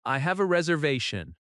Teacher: Stress reservation naturally on the third syllable.